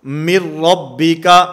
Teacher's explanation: اور اس کے علاوہ لام اور را، جس کو لر کہا جاتا ہے، لر کے 2 حروف لام اور را، اگر نون ساکن اور نون تنوین کے بعد ان 2 حروف میں سے کوئی حرف ہوگا وہاں پر ادغام تو ہوگا، ملا کر تو پڑھا جائے گا لیکن وہاں پر غنہ نہیں ہوگا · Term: ادغام بلا غنہ